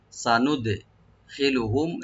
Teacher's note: প্রবেশ করাবো বা এন্ট্রেন্স দেব ওদেরকে, সানুদখিলুহুম, সা, সিনটাকে ওপেন রাখবেন, দালটাকে মাঝখানে একটু কলকলা হবে হালকা